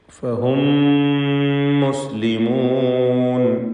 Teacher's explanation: ഫഹും എന്നതിലെ സാക്കിന താ മീമിനെ ശേഷമുള്ള മീമിൽ പൂർണ്ണമായും ലയിപ്പിച്ച് ഒറ്റ ശബ്ദമുള്ള മീമാക്കി മണിച്ചുകൊണ്ട് ഉച്ചരിക്കണം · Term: ഇദ്ഗാം ഷഫവി